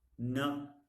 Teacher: After labiodental, it is dental, and after dental, it is alveolar. Alveolar, we have the tip or the blade as the active articulator, and teeth ridge is the passive articulator.